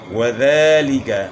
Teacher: ذال کو اپنے مخرج سے صحیح ادا کرنا ہے، زا سے چینج نہ ہو جائے، اور تھوڑا کھینچنا ہے، کھڑا زبر ہے۔